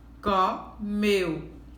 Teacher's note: Então, meu é o pedacinho mais forte. Essa sim é uma palavra oxítona, tá certo?